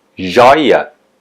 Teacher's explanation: a sílaba mais forte é jói